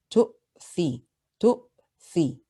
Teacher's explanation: تُؤْثِرُونَ. The hamza here has a sukoon. So be careful when you pronounce this hamza not to allow any airflow or sound.